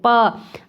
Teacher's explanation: अगर आप प उच्चारण करेंगे तो आप देखेंगे कि दोनों होंठ आपके मिल रहे हैं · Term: ओष्ठ